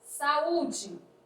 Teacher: que tem a penúltima sílaba da palavra como sílaba tônica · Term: paroxítonas